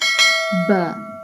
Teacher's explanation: Ba pronounced from the wet part of both lips.